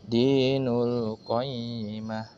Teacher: Maka ubah ti yang pada kata ta marbutoh di situ menjadi ha sukun. Sehingga dibaca menjadi dinul qayyimah.